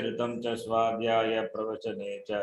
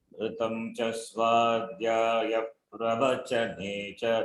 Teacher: Ne, when you say it has to go down. The intonation has to be down. Va, when you say the va, it is up.